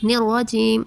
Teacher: را پر زبر کی حرکت ہے اس لیے را کو پر کریں گے۔ جیم، رجیم، یا ساکن سے پہلے زیر ہے اس لیے یا مدہ ہوگا۔